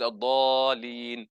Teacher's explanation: The lam wasn't given the stress. There's 2 letters, there's 2 lams there, isn't it? Mushaddada.